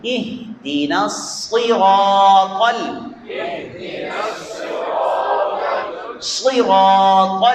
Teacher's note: صاد کو موٹا ادا کرنا ہے، پر، اگر پر نہیں پڑھیں گے تو یہ سین بن جائے گا، نصراط، معنی بدل جائے گا، تو اس طرح پڑھیں گے، اہدنا الصراط، صراط، صید، زبان کی جڑ اوپر کی طرف اٹھتی ہے اور لفظ حرف موٹا ادا ہوتا ہے، صید، اہدنا الصراط، اہدنا الصراط، تو آپ موٹا قلقلے کے ساتھ جھٹکے کے ساتھ ادا ہوگا.